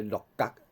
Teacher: 鹿角的角，鹿角，鹿第八声，鹿角变做第四声